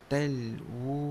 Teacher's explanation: talwu kena baca empat harakat